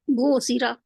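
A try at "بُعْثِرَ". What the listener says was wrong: थोड़ा सा आइन की आवाज आई है लेकिन उतनी नहीं आई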